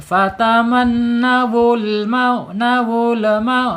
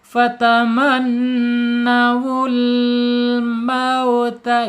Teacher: Nawul mau ada pantulan ya. Lam ini bukan qalqalah tapi dihirafkan, dicondongkan.